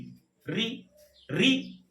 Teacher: री री हमारी जो जीभ का आगे वाला हिस्सा होता है वो ऊपर वाले मसूड़े के 3-4 बार रगड़ खा रहा है। री री री, तो री का जो स्वर है वह हम अग्रिम स्वर के अंतर्गत ले लेंगे, यानी कि अग्र स्वर कहेंगे री को।